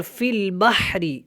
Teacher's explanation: قلقلہ کرنا ہے، تجری، اور فی البحر، ہا جو ہے آپ نے حلق سے ادا کرنا ہے، اور را یہاں پہ باریک ہے، اس کو موٹا نہیں پڑھنا